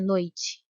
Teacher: O que quase não aparece bom e na palavra noite e repare que o é pronunciado com mais intensidade por isso ele é a vogal